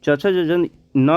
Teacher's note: च वर्ग जो है वो तालु से उच्चारण होता है।